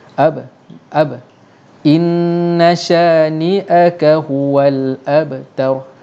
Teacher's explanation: Qalqalah kecil ini tak payah kuat sangat.